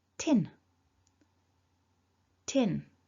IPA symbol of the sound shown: ɪ